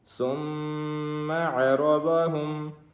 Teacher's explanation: میم کے اوپر تشدید ہے جس کی وجہ سے ہم یہاں پہ غنہ کریں گے